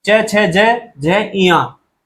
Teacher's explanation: तालुव्य हमारे मुंह के अंदर का पीछे का हिस्सा, ऊपर का पीछे का भाग